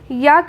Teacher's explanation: तो य का उच्चारण स्थान तालु है।